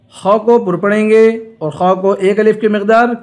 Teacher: خا کو پر پڑھیں گے اور خا کو 1 الف کی مقدار کھینچ کر پڑھیں گے